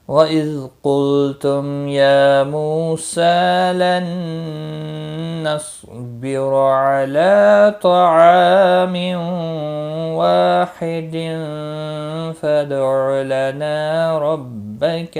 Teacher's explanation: تنوین کے بعد حروف یرملون کا واو آیا ہے، ادغام با گنہ ہوگا